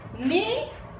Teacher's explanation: La mayor fuerza que hacemos es el ni. Penúltima sílaba.